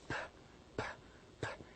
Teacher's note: if you try to pronounce p, p, p as a sound, you do not feel the vibration. So we consider p, the sound p as voiceless sound because it has no vibration.